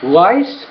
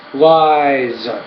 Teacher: the vowel sound which precede the Z will be longer